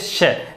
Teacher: श का उच्चारण करते समय आप देख सकते हैं कि जो जीवा है वो तालु पे टकराने की कोशिश करती है। मतलब 2 अवयव हैं हमारे पास अलग अलग, एक जीवा है, एक क्या है, तालु है।